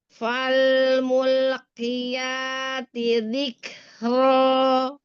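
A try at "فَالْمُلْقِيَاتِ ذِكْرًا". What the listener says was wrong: Iya, fokusnya ke bibir ya. Lupa lidahnya. Jangan mulk. Jadi lam ketika nempel di pas mulki ya, mul. Lamnya itu nempel depannya doang. Jadi bagian belakang jangan keburu diangkat walaupun setelahnya huruf qaf ya. Jadi lamnya jangan jadi tebal.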